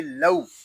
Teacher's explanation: آگے واو لین ہو رہا ہے، اور واو لین کو بغیر کھینچے بغیر جھٹکا دیے نرمی سے معروف پڑھتے ہیں، اس کو لو یا لو ایسے نہیں پڑھیں گے، اس کو پڑھیں گے لو۔